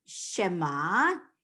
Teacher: So the last letter in the word Shema is ayin. Ayin is silent. It's a consonant that is silent.